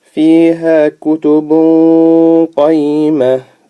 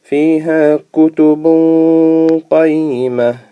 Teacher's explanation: The N sound has almost gone. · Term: ikhfa